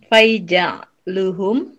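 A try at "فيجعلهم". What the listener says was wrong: Fayaj'aluhum Fayaj'alu hurufnya kebalik. Fayaj'alu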